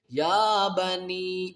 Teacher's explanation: نون یا مد زیر نی کو تین الف کی مقدار کھینچیں گے